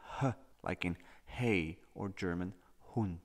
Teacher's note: all modern languages pronounce it as a glottal fricative H, like in hey or German Hund.